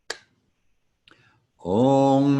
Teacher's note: The dot over the M indicates that while we close our lips in front, as we normally do with an M sound, we are also closing the back of our tongues up to the back of the roof of our mouth, as if you are wrapping your mouth around a little walnut.